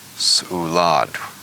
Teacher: The first syllable, su. Notice there's actually a stop after the S and before the U. So the first syllable is actually s, and the second syllable is u.